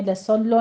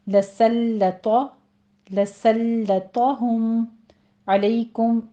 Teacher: لسلط لام کو اپنے تشدید ادا کرنی ہے، لسلو نہیں کہنا، یہ لام باریک رہے گا۔ طا کو پر پڑھنا ہے